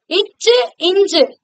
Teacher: நம்முடைய நாக்குடைய நடுப்பகுதி அன்னத்துடைய நடு பகுதியை தொடும். அப்பதான் இச்சு இஞ்சு அப்படிங்கிற எழுத்துக்கள் பிறக்கும்.